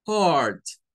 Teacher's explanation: Significa que esa EA en el inglés no existe la EA. Este diptongo se convierte en un solo sonido, que es una mezcla entre una A y una O.